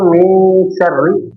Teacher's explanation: nun sukun bertemu sin maka diikfa nun sukunnya disamarkan ke huruf sin